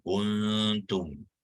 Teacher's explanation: Sekali lagi di dalam kuntum, nun bertemu dengan ta pun samalah ya, juga hukum ikhfa, jadi kita buangkan tanda sukunnya. Sekali lagi juga ikhfa hakiki, dan kita baca dia dengan dengung sepanjang 2 harakat.